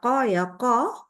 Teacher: Ya, sehingga huruf qaf punya sifat jahar. Ya, kita mengucapkan hurufnya kita tidak sertai dengan hembusan udara